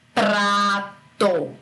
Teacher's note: A gente vai ouvir as duas consoantes, elas se encontram e a gente escuta as duas. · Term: encontro consonantal